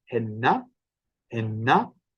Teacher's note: the penultimate syllable of a Cornish word, which is the stressed syllable, is actually probably going to have a slightly lower pitch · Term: pitch accent